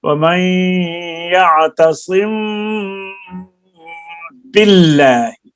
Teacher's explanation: دونوں ہونٹوں کے تری والے حصہ کو سختی کے ساتھ ملا کر با کو ادا کیا جائے گا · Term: اخفاء شفوی